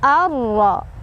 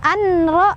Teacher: Cara bacanya dimasukkan tanpa dengungan. Jadi cuma ditekan aja ke huruf ra. Kita fokus ke huruf kedua tanpa melihat huruf pertama lagi. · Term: idgham bila gunnah